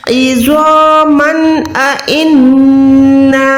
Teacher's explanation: मीम 2 ज़बर के बाद हमजा होगा तो आपने यहाँ पर जाहिर करना, इजहार का कायदा है। इज़ामन इन्ना, नून मुशद्दद है तो गुन्ना करें।